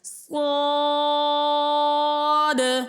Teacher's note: دال حروف قلقلہ ہے تو ہم قلقلہ بھی خوب ظاہر کریں گے۔ اور چوتھا قاعدہ یہ ہے کہ حروف مدہ کے بعد اگر سکون اصلی ہو تو وہاں پہ مد لازم آتی ہے تو اسے 3 الف کی مقدار کھینچ کر ادا کیا جاتا ہے، اس لیے ہم اسے 3 الف کی مقدار کھینچ کر ادا کریں گے۔ · یہاں پہ دیکھیں، یہاں پہ الف سے پہلے زبر ہے، الف مدہ ہے، اور الف سے پہلے پور حرف ہے کیونکہ صاد ہے، صاد حروف مستعلیہ میں سے ہے تو الف کو پور پڑھا جائے گا